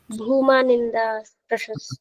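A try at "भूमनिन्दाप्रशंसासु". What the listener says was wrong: भूमा नहीं भूम, भूमा क्यों लिखेगा, भूम, तूने कहा भूमा, नहीं नहीं, भूम निंदा प्रशंसासु, भूमन शब्द है ना, भूमन, तो समास करेंगे तो नकारी तो हटाएंगे।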